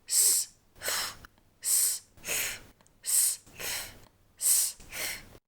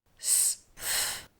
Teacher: Notice how your tongue moves quickly forward from the alveolar ridge for S to the top teeth for th.